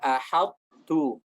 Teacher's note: Ahadtu ada tebalnya, ada itbaqnya. Kemudian baru kita ucapkan huruf ta dengan sifat yang tipis.